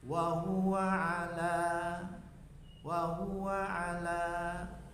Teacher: Wa huwa pendek semua. Wa huwa ala, la-nya panjang.